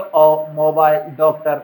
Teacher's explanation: न तो ये आ है न ये पूरी तरह से अ है, इन दोनों के बीच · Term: आगम स्वर